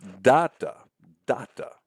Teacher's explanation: It's a 2-syllable foot, as you see here, where the stress falls, the accent falls on the first syllable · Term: trochee